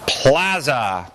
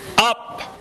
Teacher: Plaza is aspirated, but the pa in up is not.